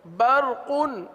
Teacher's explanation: را کو تو پر پڑھیں لیکن قاف کو بھی پر پڑھیں، قاف باریک نہ ہونے پائے